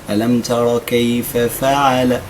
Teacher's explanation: ألم ترى، ما نوقفش عند ألم ترى، لا، ألم ترى. الراء مفخمة، ما عنديش سبب من أسباب ترقيقها.